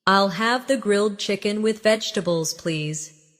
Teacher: Pay attention to the rhythm. The main stress is on grilled chicken and vegetables.